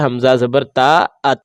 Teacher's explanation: آواز نہ لوٹ کر آئی ہے نہ آواز پھسلی ہے، بلکہ فوراً رک گئی ہے